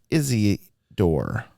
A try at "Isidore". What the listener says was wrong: Keep adding an extra syllable in there.